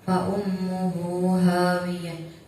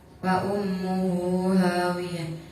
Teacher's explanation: Di situ ada mad silah yang tidak bertemu dengan hamzah, maka cara bacanya panjang. Panjangnya 1 alif atau 2 harokat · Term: mad silah qasiro